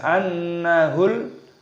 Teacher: lamnya berharokat sukun, maka kita baca jelas annahul, lamnya sukun, annahul firaq. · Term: alif lam idhar qamariyah